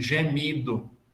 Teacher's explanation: A diástole é o contrário, joga o acento para frente.